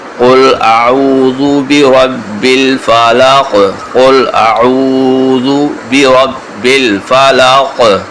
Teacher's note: اس کا قلقلہ بھی کریں گے قاف کا